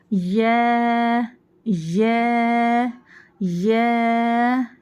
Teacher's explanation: जबान के दरमियानी हिस्सा ऊपर तालू को लगाने से या अदा होता है